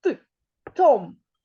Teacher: його ім'я починається із твердого звука Т